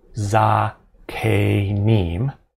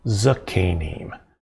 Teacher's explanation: masculine right here we won't simply say za k neem will reduce that first vowel to a schwa